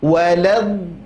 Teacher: Kenapa ada penekanan pada huruf lam? Karena lam bertasydid, ya. Setiap yang bertasydid, ingat, ada penekanan, bukan waladhdallin, enggak, tapi waladhdallin.